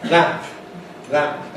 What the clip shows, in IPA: læmp